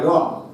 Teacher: র উচ্চারণের সময় জিহ্বার অগ্রভাগ কম্পিত হয়, জিহ্বার অগ্রভাগ কেঁপে ওঠে, তাই র কে আমরা বলছি কম্পিত ব্যঞ্জন।